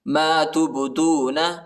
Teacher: با کو جھٹکا دینا ہے، حروف قلقلہ ہے